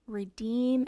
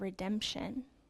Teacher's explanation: the long e sound changed to a short e sound